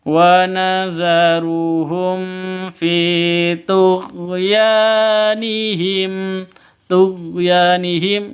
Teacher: Fi panjang 2 ketukan karena ada ya mati diawali dengan kasroh, mad asli. wa nazaruhum fi tughyanihim ya panjang dua ketukan, ada alif diawali dengan fathah mad asli atau matabi'i.